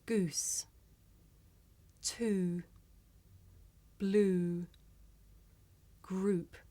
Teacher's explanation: this is a long vowel sound it's pronounced ooh